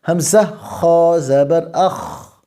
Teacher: سانس جاری ہے لیکن آواز میں کمزوری کی وجہ سے پستی آ گئی ہے